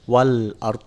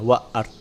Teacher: Begitu pula jangan alif lam qamariyah atau izhar qamariyah, maka lamnya dibaca dengan jelas. Wal ard, lamnya dibaca dan jelas, tidak langsung ke huruf selanjutnya